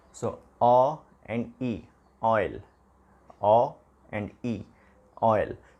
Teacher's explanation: For example, take this word oil. In this word oil, we have two vowel sound in the single syllable, o sound plus e sound. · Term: diphthongs